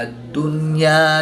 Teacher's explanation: نون ساکن کو ظاہر کر کے پڑھیں گے، غنہ نہیں کریں گے۔ الف مدہ کے بعد حمزہ اسی کلمے میں نہیں بلکہ دوسرے کلمے میں ہے تو یہاں پر مد منفصل ہوگی، 2 سے 3 الف تک کھینچ کر پڑھیں گے۔ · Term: اظہار مطلق